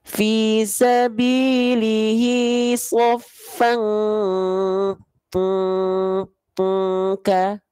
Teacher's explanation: Ikhfa hakikinya kuat dengungannya karena hurufnya kaf. Dibacanya bukan sofaka, tapi betul-betul menyerupai ang.